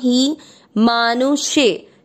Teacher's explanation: ही की मात्रा छोटी, लंबा नहीं खींचना।